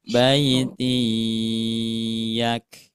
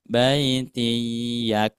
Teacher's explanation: didengungkan Bu ya, ditahan, jangan tergesa-gesa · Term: idgham biguna